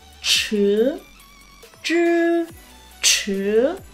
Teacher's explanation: CH cong lưỡi bật hơi